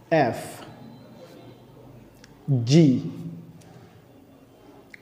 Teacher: এফ যখন আমরা উচ্চারণ করব তখন আমাদের উপরের দাঁত এবং নিচের ঠোঁট একসাথে লাগবে